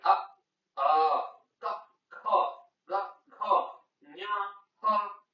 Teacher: ಅ ಆ ಕ ಖ ಗ ಘ ಞ ಹ ಮತ್ತೆ ವಿಸರ್ಗ ಇವು ಕಂಠದಲ್ಲಿ ಹುಟ್ಟುವುದರಿಂದ ಇವನ್ನು ಕಂಠ ವರ್ಣಗಳೆನ್ನುವರು